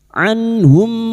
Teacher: nun sukun dibaca jelas tanpa mendengung. Anhum ini huruf ain jangan tertukar hamzah. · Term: idhar halki